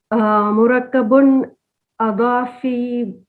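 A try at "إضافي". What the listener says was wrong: Alif with kasra. Idhafiyun. Not Adafi. Idhafiyun.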